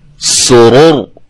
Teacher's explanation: اس کو ہم نے موٹا کیوں پڑھا ہے کہ یہ را کے اوپر جزم آ گئی ہے وقف کے دوران، را ساکن ہو گئی ہے، اور را ساکن سے پہلے حرف پر کیا ہے؟ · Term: را موٹی